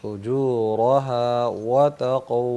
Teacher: فجورا کا را جو ہے اس کو پر کرنا ہے